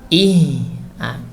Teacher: Misalnya pada huruf H, kita sukunkan huruf H, misalnya ih, itu akan terasa ada udara yang mengalir. Itulah sifat hamas.